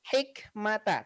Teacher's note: awal-awalnya dibaca jelas tidak ada dengung juga Tidak ada pantulan hak huruf k di situ tidak juga memantul ya hikmata tapi memang ada sedikit nafas yang keluar